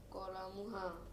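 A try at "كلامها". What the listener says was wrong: kolamuha. Ahsant.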